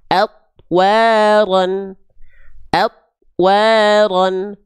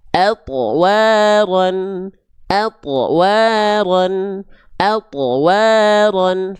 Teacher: Karena thnya tidak dipantulkan. Harusnya dipantulkan.